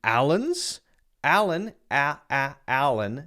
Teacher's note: the a sound and then the Lun is the schwa sound the second a is a schwa and the first a is the regular a sound